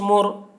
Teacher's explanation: میم را پیش مر. را ساکن سے پہلے پیش ہے اس لیے را کو پر پڑھیں گے